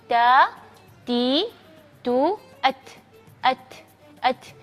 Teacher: Ta ada suara desirnya ada tapi jangan ca ca atau Ci Cu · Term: sifat berdisis